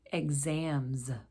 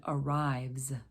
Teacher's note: the z does use our voice and it can come from the letters z s and x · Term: z sound